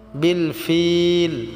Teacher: ফিলটা আমরা 3 আলিফ টেনে পড়ব